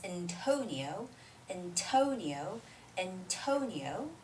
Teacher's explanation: to is the place where we put this stress